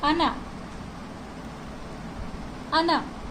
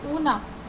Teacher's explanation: इसमें जो stress sign है वो आ के ऊपर है, तो इसे हम अना प्रोनाउंस करेंगे, ना कि ओना। ओना नहीं प्रोनाउंस होगा।